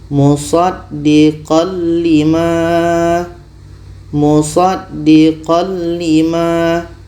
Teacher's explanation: Mengikut dari segi kesempurnaan hukumnya idgham kamil. Sempurna masuk tanwin kepada lam.